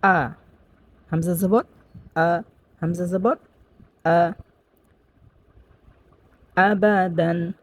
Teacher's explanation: হামজা কিন্তু এক নাম্বার মাখরাজ থেকে একেবারেই হলকের শুরু থেকে স্পষ্টভাবে উচ্চারণ করতে হবে।